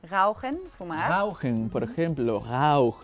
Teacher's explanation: no es con la punta de la lengua, sino es como que con el cuerpo de la lengua y atrás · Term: la R alemana